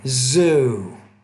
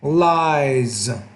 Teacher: you need to make that Z with more vibration